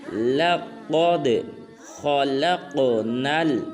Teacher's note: قاف کو پر ادا کرنا ہے، آگے دال کو قلقلہ کرنا ہے، جیسے لَقَدْ خَلَقْنَا۔ خا کو پر ادا کرنا ہے اور جب لام کو قاف ساکن کے ساتھ ملائیں گے تو قاف کو قلقلہ کریں گے · اس کے بعد آیت نمبر 4 ہے ہمارے آج کے لیسن کی، وہ ہے لَقَدْ۔ قاف کو پر ادا کرنا ہے، آگے دال کو قلقلہ کرنا ہے